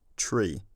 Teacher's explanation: A large-scale change in the long vowels in the middle of the last millennium turned it into tri, and since then the r has become a r, the vowel has become a slight diphthong, e, and at least in my accent the t has palatalized to a ch